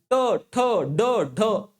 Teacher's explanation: तुमची जीभ ही मुरडते आणि तुमच्या मूर्ध्याला लावून लागते. हे बघा वरती, हा वरती मूर्ध्याला लागते. · ट जिथं लागतो की नाही, आणि तालव्याचा उच्चार करत असताना तुम्ही जिथं चिंच खाता की नाही, चिंच चिंच जिथं खाता ना, तर जिथं चिंच खाता तो भाग म्हणजे हा तालव्याचा असतो. आणि तुमची जीभ मुरडून जेव्हा तुमची मूर्ध्याला लागते, म्हणजे मूर्ध्या म्हणजे मधातील भागाला लागते, तेव्हा त्याला आपण मूर्धन्य वर्ण असं म्हणत असतो.